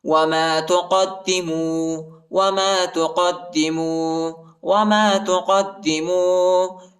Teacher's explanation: دال کو شدت کے ساتھ سختی کے ساتھ پڑھیں گے ، الف نہیں پڑھا جاتا، الف کے اوپر حرکت نہیں ہے۔